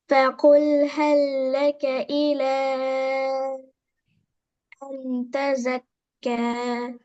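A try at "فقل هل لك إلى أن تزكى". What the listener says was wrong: ஃபகுல் ஃபகுல் என்று வரக்கூடாது.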